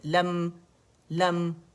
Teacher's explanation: قلقلہ نہیں کریں گے، ایک کاؤنٹ کے لیے میم پہ ٹک جانے